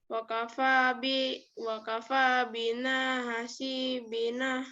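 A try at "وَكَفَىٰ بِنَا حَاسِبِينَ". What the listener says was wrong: A-nya panjang.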